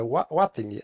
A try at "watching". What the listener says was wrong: Você tá falando como what. Tenta falar assim. Watch. Watch. Watch.